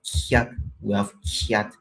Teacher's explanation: And then we have the long version of this kye palatalized k sound